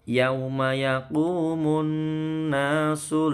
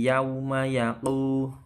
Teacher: Yauma ya, bukan yau tapi yauma yaqu. Qafnya tebel ya, yaqu panjang mat tabi'i